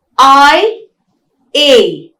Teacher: both these diphthongs are called fronting diphthongs because the tongue glides towards the front vowel E, right? They are also called closing diphthongs.